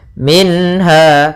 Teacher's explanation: Ha termasuk huruf halq, yaitu huruf yang kita keluarkan dari tenggorokan, maka harus jelas suara nunnya, tidak boleh tahan · Minha, pada lafal minha di sini ada nun sukun bertemu ha, maka kita namakan dengan izhar halqi, yaitu adanya nun sukun bertemu ha. Ha termasuk huruf halq, yaitu huruf yang kita keluarkan dari tenggorokan